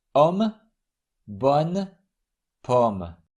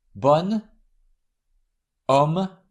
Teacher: O is pronounced like an open O in the English word nose when it's followed by a consonant other than S.